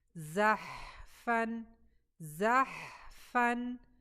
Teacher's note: और नेक्स्ट आप देखें तो आगे हमारा जा फतहा के साथ है, यहाँ भी ज़हफ़न, ज़हफ़न। और हा हमारा साकिन है और हा में हमने हवा देनी है